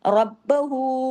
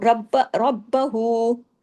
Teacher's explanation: उल्टा पेश हु दो हरकात खींचेगा।